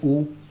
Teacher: वृत्ताकार ओष्ठ आपका तब बनेगा जब आप इन चार वर्णों को बोलेंगे · गजब मसाला पहला जो है वो है वृत्ताकार स्वर जिसमें क्या आता है छोटा उ बड़ा उ ओ और औ औष्ठावृत्ति के आधार पर ओष् ओष्ठ के आधार पर ओष्ठ आपका कैसे बनता है कोई भी वर्ण बोलते वक्त वो यहां पर बताया गया है कि वृत्ताकार का बनता है जब आप बोलते हैं उ गोला बन गया